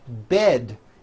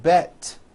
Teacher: bed has a voiced D ending it's not bet with an unvoiced T it's bed with a voiced D Road also has a voiced